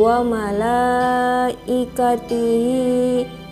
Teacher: log in Hai wamalaikatihi disitu ada mad wajib muttasil Alasannya karena huruf mad bertemu Hamzah dalam satu kata dibaca panjang 4/5 harokat